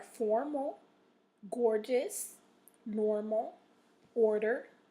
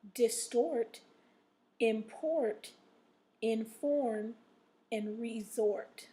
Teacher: So those last four words have the stress in the second syllable, okay? The first four words that I said have the accent or stress in the in the first syllable, okay?